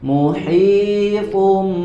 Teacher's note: tanwin bertemu dengan huruf ba diberi tambahan gunah ditahan dulu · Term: iqlab